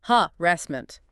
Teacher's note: And watch the stress. It's on the second syllable.